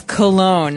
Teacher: It ends with, it's spelled C-O-L-O-G-N-E. So you don't really say the G.